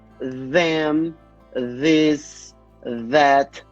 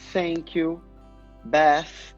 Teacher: Mas o fonema, ele é interdental. Eu não vou fazer ele sem ter língua entre o dente.